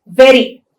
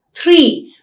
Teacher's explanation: you have another variant a tap or a flap that means the tip of the tongue touches the palate only once